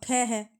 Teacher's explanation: महाप्राण है लेकिन घोस नहीं है